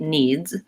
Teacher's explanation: when I say it needs I am saying a Z but my voice trails off and my Z eventually gets a little bit D voiced and